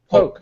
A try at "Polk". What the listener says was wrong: Poke. Poke. No, he doesn't like that L. The L. He doesn't like the L. Poke, yeah.